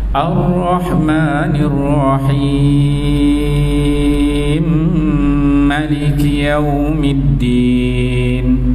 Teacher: Kita ambil wajah 6 harkat pula.